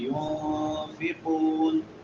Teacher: ينفقون نون ساکن ہے اور بعد میں حروف اخفاء میں سے فا ہے تو یہاں پہ اخفاء کریں گے. ينفقون قاف موٹے حروف میں سے اور واو مدہ ہے. وقف کر رہے ہیں تو جتنی مرضی مد کر سکتے ہیں.